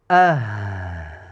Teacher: Havo ko'proq chiqishi kerak. Hams bor, birozgina cho'zibroq bir, ikki degan muddatcha ushlab turamiz. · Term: hoyu havos